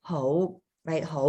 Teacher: ho is your second tone the rising uh mid-rising